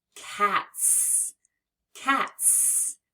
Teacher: the T is an unvoiced sound, which means when we add the S, we hear it as S.